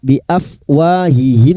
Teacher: Mim sukun bertemu wau. Idhar syafawi. Mim sukun dibaca jelas tanpa mendengung.